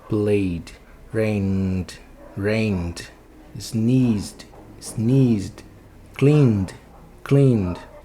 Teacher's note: Se vibrar suas cordas vocais, você bota o som de D de dado.